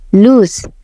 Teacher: Loose itu bunyi s-nya seperti Z.